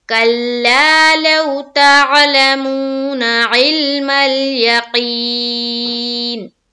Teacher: देखिए, हमें ध्यान में रखते हुए पढ़ना होगा कि हम हर हर्फ को सही तौर से अदा कर रहे हैं या नहीं कर रहे हैं, उसके मखरज के साथ। तो देखिए, काफ को मुंह भर कर पूरा निकालना है, आइन को हलक से निकालना है।